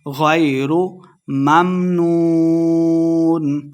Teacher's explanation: غین کو موٹا پڑھیں گے، لمحہ بالکل نہیں کرنا ، غَيْرُ مَمْنُونَ، واو مدہ ہے، 2 حرکات لمحہ کریں گے